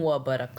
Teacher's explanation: قاف پہ ہم نے قلقلہ کرنا ہے